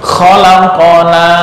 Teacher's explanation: latihan di qalqalah untuk qaf ya, seolah-olah membaca fathah tapi memantul